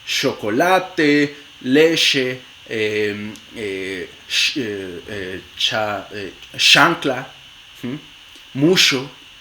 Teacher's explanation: Entonces, hay en la variedad general que casi todos los hablantes de español en el mundo usan es ch, pero en el español de Chihuahua no se produce africada, sino fricativa